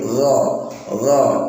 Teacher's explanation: ghasiqin bukan go tapi gha di tenggorokan